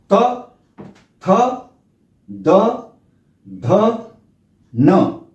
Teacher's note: और इनका जो उच्चारण स्थान है वो दंत्य कहलाता है, दंत्य। तो ये दांत और जीभ के स्पर्श से इनका उच्चारण होता है त वर्ग का